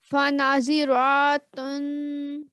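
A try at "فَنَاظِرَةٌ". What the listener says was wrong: जी, आपने फिर रॉ को लंबा कर दिया।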